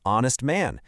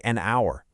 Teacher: that h is completely silent. The very first sound you hear is the o, a vowel sound